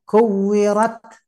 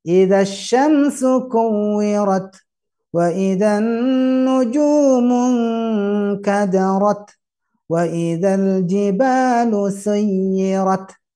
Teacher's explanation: Jadi bagaimana dengan ta? Tidak desis, dia hembus aja.